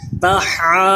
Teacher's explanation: کیونکہ یہ کھڑا زبر الف مدہ تھا اور اس کے بعد سکون اصلی ہے، اس لیے مد لازم ضاد کو پر کیجئے